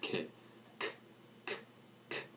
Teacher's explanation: K is an unvoiced consonant so say the sound kit you'll notice that your vocal cords